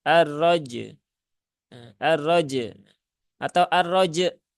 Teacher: Nah, suara ainnya jadi hilang. Padahal di situ jelas-jelas tertulis ya hurufnya ada huruf ain.